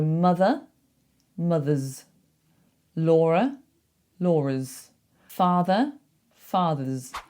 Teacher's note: So when you have a word like this that ends in uh ends in a schwah if you put an s on the end to make it plural make it a z sound